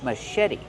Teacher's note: The CH makes the soft sh sound like shoe. Machete. Put the stress on the second syllable and make the vowel like red in bed.